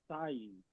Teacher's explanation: no debe sonar como una S, sino como una Z, pero vibrante. Hay una cantidad de palabras en el hebreo que comienza con esta consonante y a la hora de pronunciar no debe confundirse como si fuera la consonante samej.